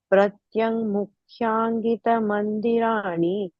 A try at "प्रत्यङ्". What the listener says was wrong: For second line, first word, pratyanga. The ing and then a ga. Pratyang, you said it's pratyanga.